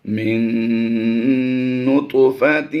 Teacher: نون ساکن کے بعد حروف یرمل ان میں سے نون آ گیا تو یہاں پر ادغام مع الغنہ ہوگا اور یہاں پر ہم نے غنہ آنی ہی کی آواز دینی ہے.